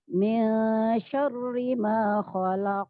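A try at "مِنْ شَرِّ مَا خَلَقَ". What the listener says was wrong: Roknya tipis. Jangan syarri. Roknya tipis. Syarri.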